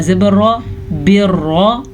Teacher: रॉ को पुर पढ़ेंगे और रॉ पे शद है तो असल में रॉ दो दफ़ा पढ़ी जा रही है, यानी कि बाज़ेर रा बिर रा ज़बर रॉ बिर रॉ, इस तरीके से दो दफ़ा रॉ पढ़ी जाएगी।